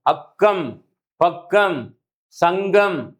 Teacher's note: இக்கு இங்கு ஆகிய இரு மெய்களும் நாவின் முதற் பகுதி, நல்லா கவனிங்க, நாவினுடைய முதற் பகுதி அன்னத்தின் அடிப்பகுதியை பொருந்துவதால் பிறக்கின்றன.